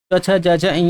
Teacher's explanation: तो आपका जीभ क्या होगा तालू में जाकर सटेगा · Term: तालब